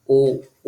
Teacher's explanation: होतात म्हणजे ओठांचा पण त्या ठिकाणी उपयोग होतो कंठोषठम ओ ओ ज्यावेळेस उच्चार करणार त्यावेळेस ओठ अशी गोल रिंग तयार होते ओठांची आणि कंठामधून तो स्वर बाहेर येतो